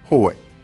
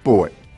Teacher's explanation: La glide W entre les voyelles O et E.